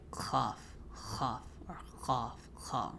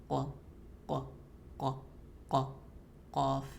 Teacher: I described the sound as kind of wet because it's coming from the soft palate and the tongue touching.